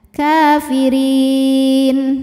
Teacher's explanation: Mad tabi'inya ya sukun didahului harokat kasrah, kemudian huruf yang disukunkannya nun. Jika berhenti, ro-nya dipanjangkan, boleh 2, boleh 4 atau 6 harokat asal konsisten dalam sekali bacaan. Kafirin. Di atasnya ada tanda waqaf al-waslu aula yang artinya diteruskan lebih utama. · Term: mad arid li sukun